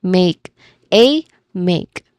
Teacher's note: When it comes to pronunciation, we start with make, which has one syllable. It rhymes with cake, so there is a clear A diphthong sound in there.